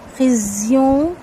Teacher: کاف ہے باریک اخفا ہوگا، خزیوں زا کو ہلائیں گے نہیں، زا کی جو سیٹی ہے سختی کے ساتھ آئے گی